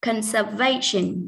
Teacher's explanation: Conservation trọng âm rơi vào âm thứ ba